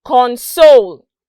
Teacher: the next word also spelt alike but it is pronounced console notice that there's a drop for the con and then arise when i said soul